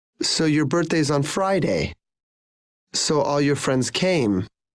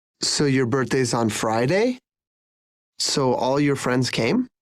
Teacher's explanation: Notice how the intonation falls when you say something you are sure about and rises when you're checking information. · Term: rising and falling intonation